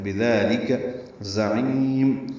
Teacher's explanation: ذالک میں دال کو 2 حرکات لمبا کرنا ہے، لام کاف باریک ہے، تو بذالک زعیم، ذات صفیر کی آواز سے ادا کریں گے، عین وسط حلق سے ادا کریں گے، اس کو لمبا کریں گے